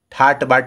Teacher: तो ये ट क्या होगा, ड में कन्वर्ट हो जाएगा